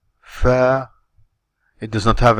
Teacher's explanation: Fa does not have an elevation, just like the word, for example, fat in English.